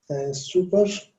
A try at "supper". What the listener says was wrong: Supper. So this is pronounced as supper because it has, super, it only has one P. So super only has one P, but supper has double P. So if you see double P, it's supper.